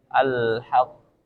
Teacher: Contoh: al-haq, watab. Nah, jadi karena tasydid ditahan sedikit, watab, terus qalqalahnya dikeluarkan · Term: qalqalah tasydid